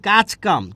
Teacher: তারপর হচ্ছে কাজ কাম, কি বলেছি, কাজ এবং কাম, এখানে ছিল জ, এখানে কি হয়েছে চ, জ কিন্তু ঘোষ, কিন্তু এখানে চ হয়ে গেছে, চ কি অঘোষ। তাহলে ঘোষ যখন অঘোষ হয়ে যাবে, ঘোষ যখন অঘোষ হয়ে যাবে তখন সেটাকে বলছি অঘোষী ভবন।